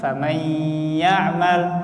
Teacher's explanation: Nun sukun ketemu ya. Nah, maka harusnya di situ ada idgham, ada gunnah di situ. Dan itu harus ada jeda waktunya. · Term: idgham bi gunnah